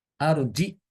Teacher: tidak ada Hamzah ya di sini ya dia dibaca arjih arjih untuk Imam Hisyam ini dia menambahkan Hamzah sukun setelah Jim